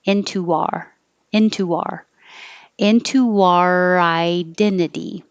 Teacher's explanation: The R will connect to into our identity.